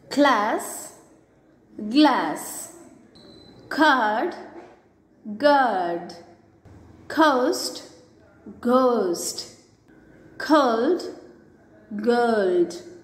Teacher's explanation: K is unvoiced and g is voiced.